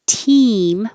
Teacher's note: if your tongue is too high it will sound like team